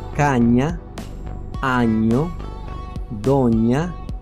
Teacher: este sonido nasal, es decir, que el aire sale por la nariz, y palatal, que significa que al pronunciarlo el dorso de la lengua se apoya contra el paladar